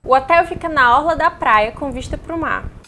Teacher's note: O primeiro é que todos pronunciam a letra L no final de hotel com um som de U